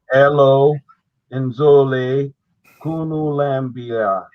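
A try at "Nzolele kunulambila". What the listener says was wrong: Remember, the N is there for your nasal. You don't read it.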